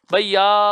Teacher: अंतिम वाला आ लंबे समय तक बोला गया ताकि वहां तक आवाज हमारी पहुंच सके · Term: दीर्घ स्वर